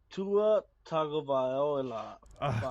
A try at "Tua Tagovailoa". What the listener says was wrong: Close. Tua Tagovailoa. You missed a no.